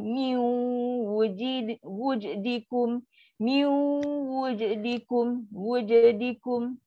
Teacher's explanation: Sebab waw ni adalah yang tak ada sabdu. Bila tak ada sabdu dia idgham naqis tak sempurna. Sebab tu bunyi miu. Tapi dengung tu tak lama lah.